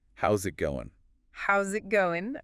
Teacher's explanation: that final G often gets dropped or is really soft. It's one of those little things that makes speech sound um more natural, more fluid.